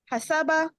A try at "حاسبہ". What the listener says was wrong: حسبہ نہیں، ہاں کو تھوڑا لمبا کریں، الف بھی ہے نا اس کے بعد. حاسبہ.